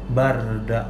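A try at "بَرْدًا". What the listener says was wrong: Nggak boleh barda. Nggak boleh bardan. Bardan. Ro-nya tebal. Bardan. Jadi huruf sebelumnya fathah, ro-nya sukun. Bardan. Nggak boleh bardan. Bardan. Bardan.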